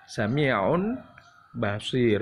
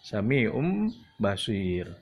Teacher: sami'um jadi mim, bukan tanwin lagi, bukan sami'un basir, bukan ya, tapi jadi sami'um basir. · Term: huruf hukum iklab